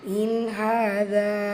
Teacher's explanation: நூன் சுக்குனுக்கு அப்புறமாக இதுஹார் உள்ளதை உள்ள மாதிரி ஓதணும், குன்னா செய்யக்கூடாது.